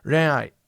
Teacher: It's in the back. The back of your tongue's going to hit the top of your mouth. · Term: fake N